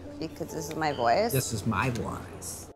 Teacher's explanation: her voice has a characteristic called vocal fry. It's a sort of crackling sound at the end of a statement.